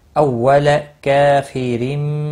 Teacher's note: را زیر دو زیر کی وجہ سے باریک پڑھا جائے گا